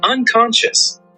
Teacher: The ending should sound like shoes with a sh sound, not a hard s or z. Let's try pronouncing just that word together.